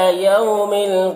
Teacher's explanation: इला में खड़ा ज़बर है इसे एक अलिफ के बराबर खींचेंगे। यौ में वाउलीन इसे नर्म आवाज़ के साथ जल्द पढ़ेंगे